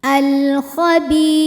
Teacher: Kemudian berikutnya ada hukum alif lam qamariyah, sebab alif lam menghadapi huruf qamariyah yaitu kha. Maka lam sukun dibaca dengan jelas atau terang, dinamakan dengan izhar qamari. Al-khabi, bi hukumnya mad tabi'i zahiri, sebab ada ya sukun yang sebelumnya berharokat kasrah.